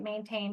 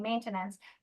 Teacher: the base goes from TAIN to TEN